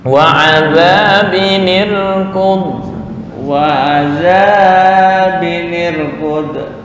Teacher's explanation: Nah, zanya kepanjangan. Hanya 2 harokat.